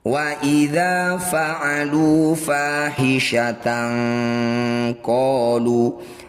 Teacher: Cara bacanya bunyi fathah tanwin, ini dengungkan 2 harokat. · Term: ikhfa ab'ad